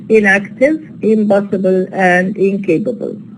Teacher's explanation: the na alveolar becomes ma bilabial because it is followed by a bilabial sound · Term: alveolar stop assimilation